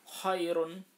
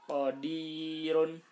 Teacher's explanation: apabila sebelum ro itu ada ya sukun, contohnya khairun. Nah, ini harus dibaca tipis.